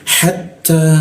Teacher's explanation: pakai ujung lidah ya, ditempelkan ke gigi, ada sedikit bocor halus